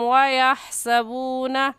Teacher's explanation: हा हलक के दरमियानी हिस्से से निकलती है, निकाल कर पढ़ेंगे